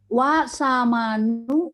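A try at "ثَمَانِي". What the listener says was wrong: Samani ya, samani. Nanti huruf ya-nya masih muncul ya. Yang kita bilang samaniyatu menjadi samani ya. Kita hilangkan tak marbutoh maka samani ya.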